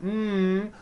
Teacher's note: the m sound comes out of your nose. It's a nasal sound.